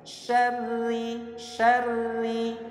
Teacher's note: Setiap ra yang berharokat kasrah hukumnya itu pasti tarqiq atau tipis ya. Saya ulang, setiap ra yang berharokat kasrah hukumnya pasti tarqiq atau tipis ya.